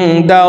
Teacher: আল্লাহ শব্দের আগের হরফে জবর আছে এই কারণে এই লামকে ল বলে পড়ব অর্থাৎ মোটা করে পড়তে হবে